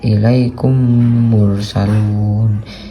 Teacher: dileburkan tuh kayak disatukan ke huruf Mim mimnya ini mim sukunnya ini di disatukan ke huruf mimnya ini ilaikum mursalun dengan dengung